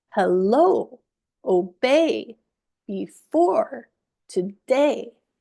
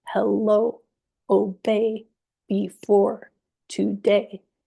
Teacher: These words are stressed on the second syllable.